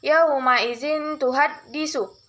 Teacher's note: ikhfa hakiki karena ada nun mati atau tanwin bertemu dengan huruf ta, cara membacanya samar-samar membentuk huruf ta